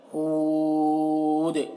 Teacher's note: یہاں پر بھی دال میں قلقلہ ہوگا، وقف کریں گے تو دو زیر کی تنوین سکون سے بدل جائے گا، تو دال میں قلقلہ کریں گے آخر میں اور زیادہ کھینچ کر روکیں گے، یہاں پر زیادہ کھینچیں گے، ہود، اس طرح۔